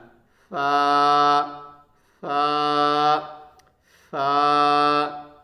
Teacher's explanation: اوپر کے جو چوڑے سے دانت ہوتے ہیں ان کا کنارہ رہے گا اور نیچے کے ہونٹ کا تری والا حصہ